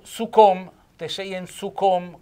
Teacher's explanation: con la O chiusa, accento tonico sulla O, è il testardo